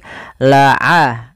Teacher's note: Ain kita keluarkan daripada tengah tenggorokan kita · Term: huruf ain